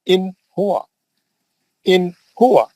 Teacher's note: तो ये नून को क्लीन पढ़ना, बिल्कुल जल्दी पढ़ना, अच्छा पढ़ना, पूरा नून बताना पढ़ के, और लंबा नहीं, इन बोल के लंबा नहीं करना, उसको गुन्ना नहीं करना, खींचना नहीं। असल इजहार बोलते हैं खींचना नहीं, लंबा नहीं करना, गुन्ना नहीं करना, उसको बोलते हैं इजहार, उसको बोलते हैं इजहार।